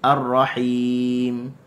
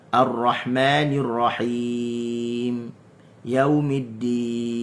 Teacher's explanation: huruf mim dan huruf nun ni dia ada aslul gunnah, asal gunnah, tapak gunnah.